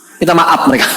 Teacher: orang Sunda gak bisa bilang F